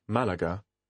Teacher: notice that there is a little Accent on the first syllable this accent tells you that the word is an exception to the rule instead of stressing the penultimate syllable you put the stress on the first syllable